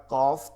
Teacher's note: এবার জিব্বার গোড়া থেকে একটু আগে বাড়িয়া তার বরাবর উপরে তালুর সঙ্গে লাগাইয়া কাফ